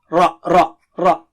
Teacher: Ra is thick here. It is not English R.